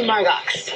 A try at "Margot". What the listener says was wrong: It's Margot. The X is silent.